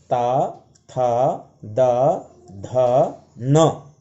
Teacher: क्यों बोलेंगे इनको दंत्य वर्ण, क्योंकि इनका उच्चारण करते हुए इन अक्षरों का, इन वर्णों का जीभ सीधे दांत पर लग रही है।